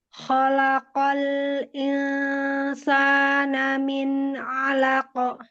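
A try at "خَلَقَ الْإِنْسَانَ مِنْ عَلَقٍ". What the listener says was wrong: Alaqo. Ko-nya masih tetap tebal.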